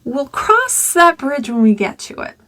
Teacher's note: Notice one word sung a little more. And I sang on cross.